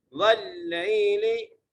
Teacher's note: واو کو لام سے ملانا ہے اور لام کو یا سے ملانا ہے